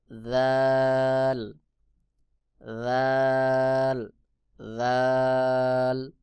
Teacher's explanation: এরপরে রয়েছে জাল ছা এবং জাল একই জায়গা থেকে উচ্চারণ হয় জিহ্বার আগা সামনের উপরের বড় দুই দাঁতের আগার সঙ্গে লাগাইয়া জাল উচ্চারণ হবে